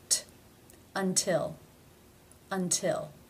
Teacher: It is beginning a stressed syllable. Therefore, it is pronounced as the real T.